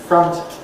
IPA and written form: frʌnt (front)